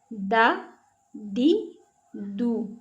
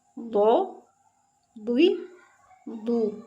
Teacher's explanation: दाल बारीक और दौद को मोटा करके पढ़ेंगे।